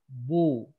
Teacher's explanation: Baru bibir dulu rapat, baru manyun untuk domah.